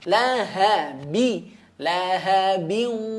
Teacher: Nah, laha, perhatikan pada kata lahabi, laha di sini pastikan huruf h-nya benar ya. H yang di sini adalah h pangkal tenggorokan.